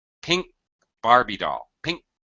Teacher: I move my tongue up to position, getting ready to drop it to aspirate and pronounce the K, but I never do.